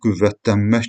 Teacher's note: Və iki məmələ gəldi tələffüzdə, yəni bax biz görürük sözün tələffüzü zamanı N samiti yoxdur. Tələffüzdə N samiti yoxdur. Onun əvəzinə M səsi var. Ona görə qüvvət, qüvvətlənmək sözündə n səsi yoxdur deyə doğru cavab C bəndidir.